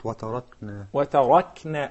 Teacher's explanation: The first word also has ra, and this ra, مُفَخَّمَة, right? Because the fatha on top of it